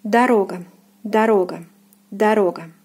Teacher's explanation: It is pronounced as O. So the first unstressed one will be pronounced as A.